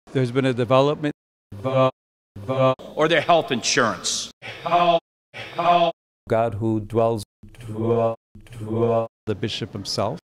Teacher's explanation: The place where the DRESS vowel is clearly centralized is before L.